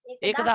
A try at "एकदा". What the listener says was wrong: क्षमा कीजिए, यहाँ एकधा नहीं एकदा होगा ना। तथा दंत्य होगा